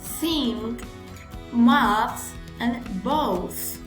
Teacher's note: It is fricative voiceless and it is interdental.